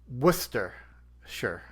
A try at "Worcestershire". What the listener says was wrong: So Worcester, WOOSTER. Worcestershire sauce. You put too many syllables in there. It's not Worcestershire, it's just Worcestershire. Worcester.